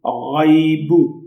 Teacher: اب اس غین کو موٹا کر کے پڑھنا ہے، یہ حروف مستعلیہ ہے